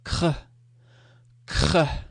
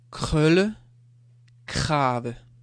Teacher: the tongue is in the middle of the mouth, and it's more done in the throat. Sound is coming from the throat.